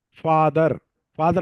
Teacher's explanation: ఫ పఫా లో ప అనేదాన్ని ఎఫ్ సౌండ్ తో పలుకుతున్నాం . ఫాదర్ అన్నామ అనుకోండి ఫాదర్ ఫాదర్ అంటే ఎఫ్ తోనే పలుకుతున్నాం. అవును